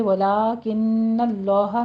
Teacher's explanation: نون مشدد ہے، غنہ واجبہ کیجیے